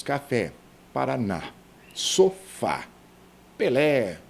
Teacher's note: Tonicidade silábica na última sílaba e vamos classificar como as oxítonas